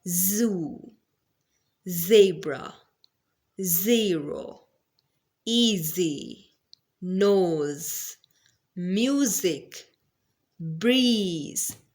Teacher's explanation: whenever we will produce this sound there will be the vibration of the vocal cords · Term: Z sound